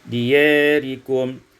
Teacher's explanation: diyarikum, imalatu fathil ya wal alif, dibaca imalah fathah ya dan alif, diyarikum